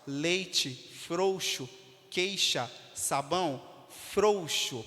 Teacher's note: pode ser decrescente como nas palavras Leite frouxo queixa sabão frouxo percebe que a força vai estar no o e não no u